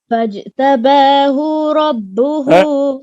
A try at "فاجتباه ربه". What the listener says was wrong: अभी भी लंबा हो गया.